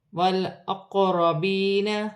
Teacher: قاف ساکن ہے، حرف قلقلہ میں سے ہے، قلقلہ کے ساتھ ادا کیا جائے گا۔ یا ساکن سے پہلے زیر آ رہی ہے، یا مدہ بنے گی، اسے ایک الف کی مقدار کھینچ کر پڑھا جائے گا